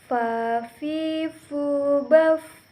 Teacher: Huruf fa keluar dengan cara menyentuhkan ujung dua gigi seri bagian atas dengan bibir bawah bagian dalam. Diucapkan dengan mengalirkan suara sekaligus dengan mengalirkannya udara.